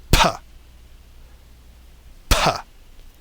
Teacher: You close your lips, then you push air past them, exploding them open. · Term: bilabial